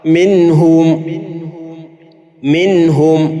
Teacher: കാണാം ഇത് നൂനിന്റെ അടിസ്ഥാന ഉച്ചാരണമായ മണിക്കലിനേക്കാൾ കൂടാൻ പാടില്ല എന്ന് അറിയിക്കാൻ വേണ്ടിയാണ് നൂനിന് സാധാരണയുള്ള ചെറിയൊരു ഉന്ന അതിൽ ഉണ്ടാകും എന്നർത്ഥം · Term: ഇളഹാറിന്റെ